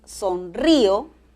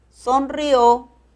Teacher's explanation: es sonrío, acento en la I, sonrió, acento en la O. Muy bien, ojo, estoy ya señalando acento.